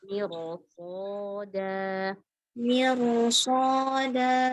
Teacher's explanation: Roknya tebalkan, sodanya lebih tebal lagi.